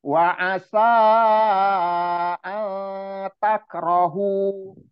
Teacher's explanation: Wa asa, sa-nya dipanjangkan 4 sampai 5 harokat. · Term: mat jais mufasil